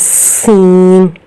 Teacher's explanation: جو اگلے والے دانتوں میں سے باریک سی آواز نکلتی ہے وہ سین کی ہوتی ہے، سین، سیٹی کی آواز کی طرح۔